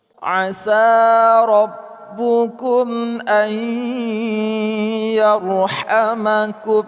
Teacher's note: Nun mati temu dengan ya, idgham bi gunnah.